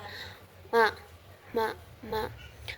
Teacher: posisi pita suaranya itu majhur atau bersuara